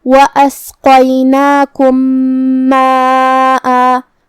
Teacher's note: آخری میں میم ساکن ہے، پھر حرف المیم ہے کلمت ماءً میں، جو کہ یہاں حکم ہوا ادغام متماثلین صغیر. ہم پہلے میم کو دوسرے میم میں ملا کے ایک ہی میم پڑھیں گے غنہ اور تشدید کے ساتھ.